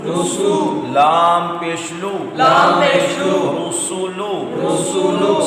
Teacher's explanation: سین میں سیٹی ہے اس کو واضح ادا کیا جائے گا